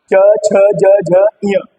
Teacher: तालव्य व्यंजन जिनको बोलने पर जीभ जो है तालु पर टच करती है। जितने भी च वर्ग वाले हैं सबको बोलने पर तालु पर जीभ टच करेगी।